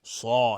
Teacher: الف هم تابع صاد غلیظ میگیم صا، نمیگیم صا، دهان پر میشه.